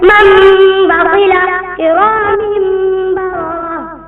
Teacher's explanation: ابدال کا ایک حرف ہے با، جب یہ حرف نون ساکن یا تنوین کے بعد آ جائے تو وہاں پر ابدال ہوگا، اور نون ساکن یا تنوین میم سے بدل کر ایک الف کے برابر غنہ ہو کر پڑھا جائے گا، جیسے من بخلا کرام بررہ، اس کو ابدال کہتے ہیں۔